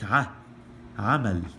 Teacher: So here, the Ain sound has an sound, something like a really short, abrupt a sound